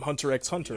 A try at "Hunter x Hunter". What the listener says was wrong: Don't pronounce the X.